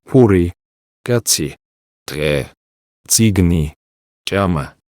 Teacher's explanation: the ejective consonants, which are pronounced with a burst of air from the glottis.